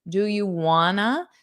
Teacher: So instead of want to, you can commonly pronounce those as wanna.